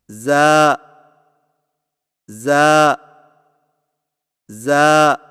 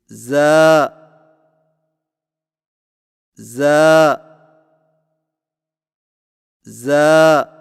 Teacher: زا کی ادائیگی میں زبان کی نوک کو سامنے والے نیچے کے 2 دانتوں کے کناروں سے مضبوطی سے لگا کر باریک اور سیٹی جیسی آواز میں پڑھیں